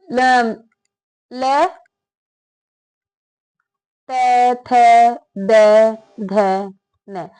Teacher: ल त थ द ध न ये सारे दंत से ही बोले जाते हैं